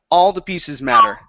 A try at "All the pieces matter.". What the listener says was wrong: Give me a long E instead of pieces.